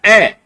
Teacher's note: मध्य स्वर वे स्वर जिनके उच्चारण में जीवा के मध्य भाग सक्रिय होता है